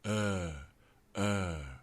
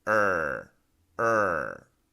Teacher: the only difference there was a relaxed tongue and a tongue with energy flexed tongue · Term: r sound